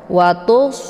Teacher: dan dia adalah sifatnyaofir jadi anginnya itu lebih jelas ya ya ditebalkan kemudian anginnya itu dibunyikan secara jelas